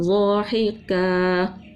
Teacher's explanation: باریک کاف تھی اور دو زبر تھا اس لیے اس کو کیا کیا؟ ایک الف سے بدل دیا، وقف کا نام ہے وقف بالابدال۔